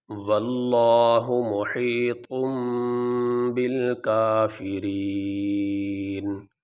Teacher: اب یہاں پہ آیت مکمل ہو گئی، تو یہاں پہ ہم وقف کریں گے، سانس لیں گے، تو وقف کرنے کی صورت میں آخری حرف کو ساکن پڑھا جاتا ہے، اور یہاں پہ آخری حرف ہے نون، اور اس کے اوپر ہے زبر، تو وقف کرنے کی صورت میں ہم اس کے اوپر جو زبر ہے وہ نہیں پڑھیں گے، نون کو ہم ساکن پڑھیں گے۔ ایسے واللہ محیط بالکافرین، یہ ہم نے وقف کرنے کی صورت میں جو آخری حرف ہے نون، اس کو ہم نے ساکن پڑھا، لیکن جو آخری حرف ہے اس کو پڑھا جائے گا، اس کے اوپر جو حرکت ہے وہ نہیں پڑھی جاتی۔